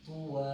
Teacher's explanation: ایک الف کی مقدار ہم اس کو لمبا کر کے پڑھیں گے